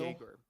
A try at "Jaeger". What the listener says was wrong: Why are you turning it into an R? It's an L.